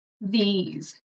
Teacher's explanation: So the TH, tongue between your teeth, but it's a voice TH, so you want vibration. So these, it's like a Z sound.